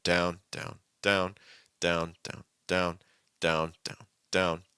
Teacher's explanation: medium down and then kind of sliding back up and you can go back up to the initial points like · the goal is to have your first and third pitch be about the same